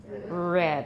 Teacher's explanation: the voiced alveolar approximant from American English